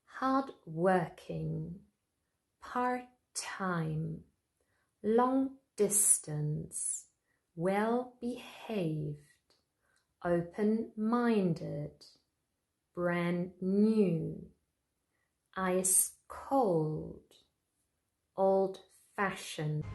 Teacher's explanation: Often they have a little hyphen in between. Those adjectives are usually stressed on the second syllable, the second word.